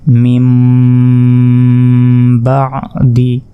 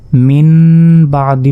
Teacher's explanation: পর বা অক্ষরটি আসার কারণে এই নুনের উচ্চারণ আর হবে না এই নুনের উচ্চারণ বাদ হয়ে এইখানে মনে মনে আমরা মিমের উচ্চারণ করব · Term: কলব